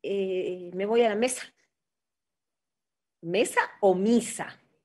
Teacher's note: solamente tres vocales la a la i y la u pero la i y la u no son tan altas como en el español son intermedias